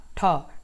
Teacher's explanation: ठ मूर्धन्य। मूर्धन्य, मूर्धन्य महाप्राण, महाप्राण अघोष। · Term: मूर्धन्य महाप्राण अघोष